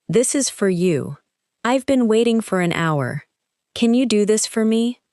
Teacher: In each sentence, for is likely to be short and unstressed. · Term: weak word